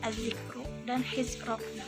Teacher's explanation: jika di antara ro dan huruf yang berharokat kasroh atau sebuah huruf yang disukunkan, maka ro-nya dibaca tafkhim menurut qiraat Asyim